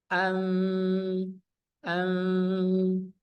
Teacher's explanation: Kalau yang ikhfa syafawi tidak ditutup rapat, dia diringankan saja, dikatup ringan.